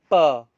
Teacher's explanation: Now when you will utter the per sound, you will see that the sound is produced by completely stopping the airflow at the lips and then releasing it. Per. When we release, when we open the mouth, the air is released.